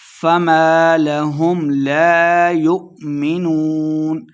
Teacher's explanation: فما الف مد 2 حرکات لمبا کریں گے ، لَهُمْ لَا يُؤْمِنُونَ حمزہ ساکن کو جھٹکے کے ساتھ پڑھیں